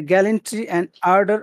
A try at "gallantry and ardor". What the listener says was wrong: Tell me, gallantry and ardor. I don't really hear the emphasis.